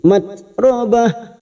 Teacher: tak sukun mempunyai sifat hamas yang harus terlihat pada saat disukun